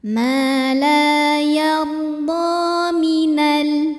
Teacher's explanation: Dha mad tabi'i muqaddar karena ada baris fathah panjang di atas huruf dhad. Cara membacanya dipanjangkan dhodnya ini 2 harokat